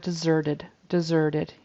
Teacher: the z sound is still a little soft in the word deserted